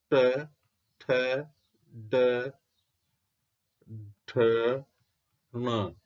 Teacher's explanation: इनका उच्चारण स्थान है मूर्धा है। इसके अलावा र और स।